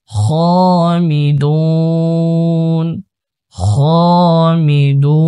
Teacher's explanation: ওয়াকফ করার কারণে নুনের উপর সাকিন দিতে হবে, এক আলিফের জায়গায় 3 আলিফ করতে হবে, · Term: মাদ্দে আরদি